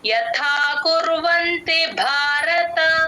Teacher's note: భారతలో భ కి మహాప్రాణం ఉంది గమనించండి